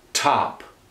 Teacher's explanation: say top and notice the explosion of that T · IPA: tʰɒp̚